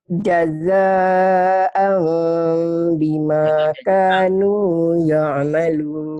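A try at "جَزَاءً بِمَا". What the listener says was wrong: Kalau masih jaja'ang, jangan jaja'ang, kan bukan ihfa. Ini iklab. Bunyi am. Jaza'am gitu. Jaza'am bima kanu ya'malun. Bukan ikhfa ya, iklab ini. Kalau jaja'ang berarti ikhfa.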